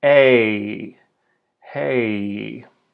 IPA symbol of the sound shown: ei